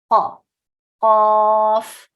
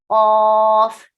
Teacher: Also, this is heavy because see, back of the tongue is going up and the middle is forming slight pit